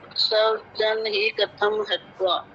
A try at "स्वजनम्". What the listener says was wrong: स्वजन का है, कहाँ है स्वजन? स्वजनम है, ऊपर बिंदी है, स्वजनम।